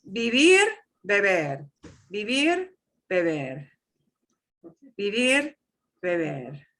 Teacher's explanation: The B is softer, but they'll both sound like a B